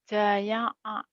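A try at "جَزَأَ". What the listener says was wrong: Jaza'a. Jaya'a. Zai.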